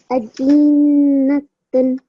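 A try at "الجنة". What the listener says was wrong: Almost there, darling. Just this last letter, the sound that you made there is slightly longer.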